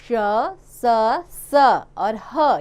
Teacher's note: जिन व्यंजनों के उच्चारण में वायु जीभ से घर्षित होती हुई हल्की सी सीटी की आवाज का आभास कराती हुई बाहर निकलती है उन्हें ऊष्म व्यंजन कहते हैं।